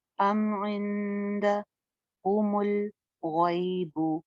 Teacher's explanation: नून साकिन के बाद दाल है, बारीक इख्फा करेंगे